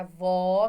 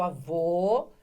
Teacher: Inclusive, ambos servem para fazer a diferença entre as palavras e ambos fazem a diferença entre o som que é o aberto, que é o feminino, e o som que é fechado, que é o masculino. Por isso, avô tem o acento circunflexo e a avó, que é a mulherzinha, tem o acento agudo, certo?